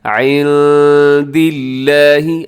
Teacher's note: دال، جو کہ حروف اخفا میں شامل ہے، تو آپ نے یہاں پر اخفا کرنا ہے، آواز کو ناک میں چھپانا ہے۔ عند اللہ، آگے لفظ اللہ ہے، اس کو آپ نے باریک پڑھنا ہے کیونکہ اس سے پہلے دال کے نیچے زیر ہے۔